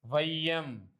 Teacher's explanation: ஐகாரம் சொல்லின் முதலில் வரும்போது 1.5 மாத்திரை அளவில் ஒலிக்கும். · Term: ஐகார குறுக்கம்